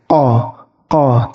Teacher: Huruf qaf ini cara pengucapannya itu ketika belakang lidah kalian itu mengenai langit-langit. Qa terdengar tebal.